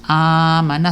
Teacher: So makikita po natin ay mahaba ang hamza. Okay, mahaba ang pagbigkas ng tinatawag na hamza na may fatha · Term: stress sound